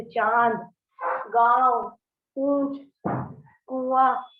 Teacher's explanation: स्वरों का उच्चारण करते समय जब ध्वनि मुंह के साथ साथ नाक से बाहर निकले तो अनुनासिक कहलाते हैं